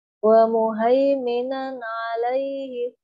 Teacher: Nah, ada tanwin menghadapi huruf ain. Ini dibacanya jelas karena hukum bacanya yaitu izhar ya.